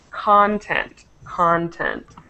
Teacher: the stress is on the O, content